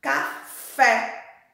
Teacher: Fé é o som aberto. Então recebe o acento agudo.